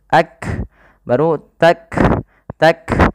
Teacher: Kaf juga punya sifat namanya hams maka cara melafalkannya bagaimana urutannya urutannya adalah syiddahnya dulu baru hamsnya